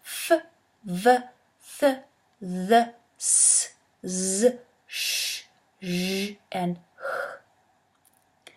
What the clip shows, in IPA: f, v, θ, ð, s, z, ʃ, ʒ, and h